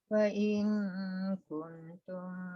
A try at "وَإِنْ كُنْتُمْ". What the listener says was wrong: Kuntu dengung sikit lagi.